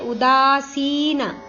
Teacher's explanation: ಉದಾಸೀನ ಇಲ್ಲಿ ದ ಮತ್ತು ಸಿ ದೀರ್ಘ ಇದೆ